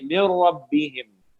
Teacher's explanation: اب یہاں نون کی ساؤنڈ ہی نہیں آئے گی, را کے ساتھ میم کو ملا دیں گے